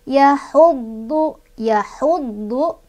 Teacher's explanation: ditekan ya dodnya karena ada tasdidnya